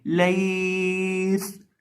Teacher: اس کے اندر ہم سیٹی کی آواز پیدا کر کے پڑھیں گے، اور وقف کرتے وقت اسی سین کو ساکن کر دیں گے۔